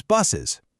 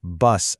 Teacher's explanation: It ends in this distinct hiss. If we just slapped another S on there, it would literally sound like buses.